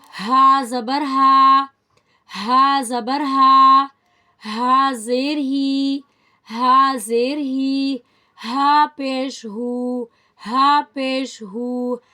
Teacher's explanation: ہا حلق کے درمیانی حصے سے ادا ہوتا ہے، from the middle of the throat